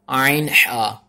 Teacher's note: हलक के बीच से, यानी कि हलक का जो सा दरमियान वाला हिस्सा है ना वहां से ये अदा होता है